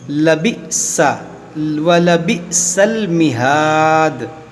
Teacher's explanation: حمزہ ساکنہ ہے، اس کو ہم جھٹکا دے کر پڑھیں گے